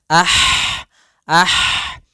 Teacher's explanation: Yaitu hak atau bisa kita sebut dengan H pedas, yaitu eh adanya aliran nafas yang kita lafalkan dan dia lembut